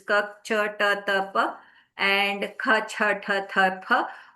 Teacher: all of these are non-resonant, non-vibratory kind of sounds